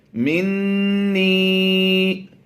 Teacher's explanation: نون مشدد میں ہم نے غنہ کیا ہے